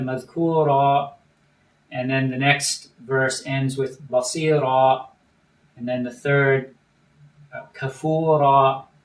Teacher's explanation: it keeps shifting back and forth between ura and ira